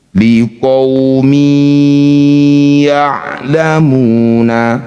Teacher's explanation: Jangan lupa bighunah dengan mengalirkan suara melalui rongga hidung. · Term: idgham bi gunnah